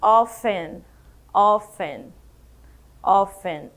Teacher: Essa daqui também tem uma curiosidade na pronúncia que eu não falo o T, eu digo often, often, often, ok?